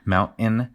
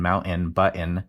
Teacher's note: what what we call a glottle stop where you make the T with your throat